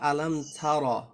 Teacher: সিফত হলো এই তা হরফটা থেকে একটু বাতাস বের হয় হালকা